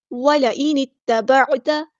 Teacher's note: نون کو ہم نے تا کے ساتھ ملا دینا ہے، اور یہاں پر جو حمزۃ الوصل ہے وہ ہمارا ڈراپ ہو جائے گا، گر جائے گا · حمزہ کی آواز واضح ادا کرنی ہے، نون کو ہم نے تا کے ساتھ ملا دینا ہے ، اور یہاں پر جو حمزۃ الوصل ہے وہ ہمارا ڈراپ